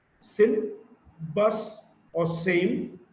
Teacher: a voiceless alveolar fricative